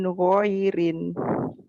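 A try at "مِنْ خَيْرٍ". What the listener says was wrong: hati-hati ya jangan min goirin kho ada kho ada min khairin kalau min goirin lain khair baik goir lain min khairin kemudian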